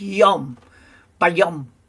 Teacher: the vav in the middle is no longer a vav. You don't say it as a vav. It's replaced by the vowel sound, which is the O sound, because it's a cholam up there.